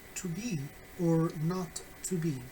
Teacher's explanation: Hamlet probably places the stress on the word not instead of the verb to be again to signal the contrast in the second part of this phrase. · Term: tonic stress